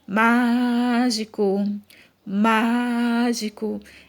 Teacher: o que eu mais demorei falando, né, foi a sílaba má. Então, má é a sílaba mais forte, é a que você pronuncia com mais força. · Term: sílaba tônica